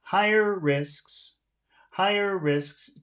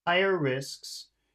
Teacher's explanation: can you hear how higher is a higher tone and risks is a little bit lower